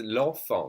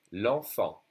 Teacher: L'enfant, and we don't say the T.